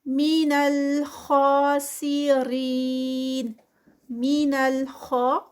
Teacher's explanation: خا جو ہے وہ 2 counts اور ساتھ میں ہیوی ہوگا